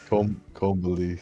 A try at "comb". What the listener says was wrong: Comb. Oh, you don't say B in comb.